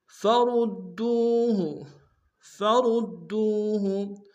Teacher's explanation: فِي شَيْءٍ فَرُدُّوهُ، فَرُدُّوهُ، فرود میں را کو موٹا ادا کرتے ہوئے دال کے سامنے لیں گے، دال کو تشدید زور دیں گے، دال کو واو کے سامنے لیں گے، واو مدہ ایک دال میں کھینچیں گے۔